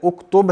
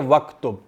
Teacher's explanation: अकेला पढ़ें तो उक्तुब होता है, अगर वाओ पीछे आ जाए तो फिर इसको वक्तुब पढ़ते हैं